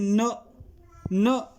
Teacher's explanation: न खुल के वायु नहीं जा रही है, तो भैया पंचन अक्षर पे है, ये भी हमारा अल्पप्राण में आ जाएगा।